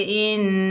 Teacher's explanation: एक अलिफ की मिकदार गुन्ना होता है